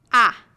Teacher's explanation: your lips are spread and your mouth is open your tongue is low near the floor of your mouth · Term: short a sound